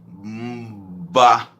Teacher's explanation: o B de banana é bilabial